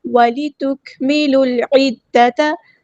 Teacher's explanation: کاف باریک light letter ہے، کاف ساکن ہے تو ہم اس کی صرف شو کریں گے. لام کو لام کے ساتھ ملا دیں گے، حمزۃ الوصل ڈراپ ہو جائے گا. · لام کو لام کے ساتھ ملا دیں گے، حمزۃ الوصل ڈراپ ہو جائے گا. لام یہاں پر لام قمریہ ہے، اس کو ہم ظاہر کریں گے. عین کو وسطی ہے لیکن زور سے ادا کریں گے.